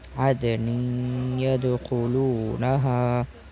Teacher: اوپر والی مثال میں نون ساکن کی بات تھی اور یہاں تنوین کی بات کریں گے۔ دیکھیں تنوین کے بعد یا ہے اور یا پر تشدید ہے تو یہاں ادغام ہوگا، یعنی اس تنوین کو یا میں ملا کر پڑھیں گے